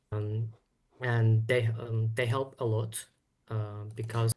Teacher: Notice they is changed to duh. So the th sound has become a s, and the sound is a little bit of a duh.